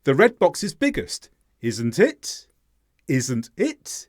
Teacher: it being the stressed word the pronoun · When the pronoun is stressed at the end of the question tag, this means the speaker is not sure if their statement is correct. They're asking a genuine question.